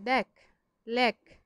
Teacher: ক্রিয়াপদের তুচ্ছার্থ প্রকাশে এ ধ্বনির বিবৃত উচ্চারণ হয়।